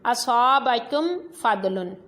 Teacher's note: میم ساکن کے بعد فا ہے تو اب غنہ نہیں کرنا۔ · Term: اظہار شفوی